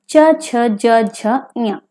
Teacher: चा वर्ग में आते हैं आपके च छ ज झ ञ, तो इनका उच्चारण स्थान है तालु से